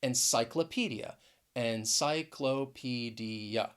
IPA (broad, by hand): ɛnˌsaɪ kləˈpi di ə